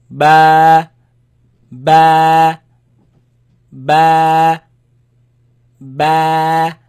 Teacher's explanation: It is elongated, it is stretched because of the alif following it.